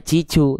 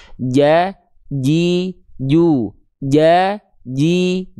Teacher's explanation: Tengah lidah kita itu nempel ke langit-langit. betul-betul nempel tidak ada celah sehingga huruf jimnya enggak keluar percikan nafas